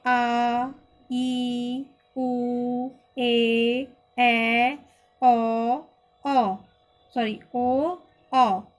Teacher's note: तो इनको बोलने में अधिक समय लगता है, लंबा खींचकर बोलते हैं, तो इसीलिए इनको हम दीर्घ स्वर कहते हैं।